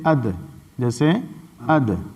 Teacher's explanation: تو جو آگے تا کا مخرج پڑھے تھے وہی دال کا مخرج ہے، یعنی زبان کا سرا اور اوپر کے بڑے دونوں دانتوں کا جڑ، اوپر کے بڑے دونوں دانتوں کی جڑ، وہاں سے مل کر کے دال ادا ہوتا ہے